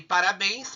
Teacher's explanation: Bens é a sílaba tônica e ela está na última sílaba da palavra. E terminou em ens, tá? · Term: oxítona